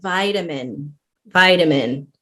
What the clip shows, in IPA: ˈvaɪtəmən